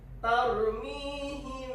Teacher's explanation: Dibaca samar disertai dengung. · Jadi bibir mau nyentuh nggak nyentuh, tapi nyentuh. Nyentuhnya itu nggak melekat seperti iklab. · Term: ikhfa syafawi